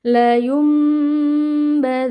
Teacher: Cara membacanya nun sukun dibalik atau diganti menjadi mim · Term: iqlab